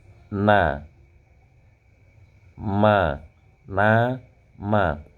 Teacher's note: Ada sensasi dengungan, ada sensasi gunnahnya di khayshum pada saat mengucapkan nun dan mim yang hidup